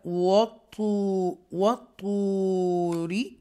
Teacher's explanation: حروف مستعلیہ میں سے طا ہے، رائٹ، تو بولڈ پڑھا جائے گا، وَطُورِ، اور یہ یا واو مدہ ہے، اس کو سٹریچ کر کے ہم پڑھیں گے۔